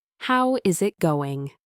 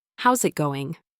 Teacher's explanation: Is it becomes sit, and the final G in going is often softened or even omitted. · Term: connected speech